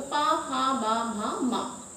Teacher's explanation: पवर का उच्चारण हम करते हैं तो हमारे दोनों होंठ एक दूसरे को स्पर्श करते हैं। ठीक है। तो पा फा बा भा मा हमारे दोनों होंठ स्पर्श कर रहे हैं पवर का उच्चारण करते समय।